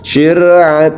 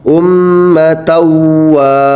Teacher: tulisannya syatan wa karena dimasukkan ke huruf wau ya menjadi Sir jadi tanwinnya yang dimasukkan ke huruf wau